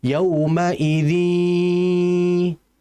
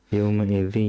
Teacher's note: Ya-nya nggak ada tasydid, sehingga ini disebut idgham naqis, sehingga gunnah nunnya masih ada.